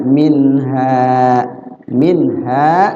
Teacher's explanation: ada nun mati ketemu ha izhar nunnya dibaca zhar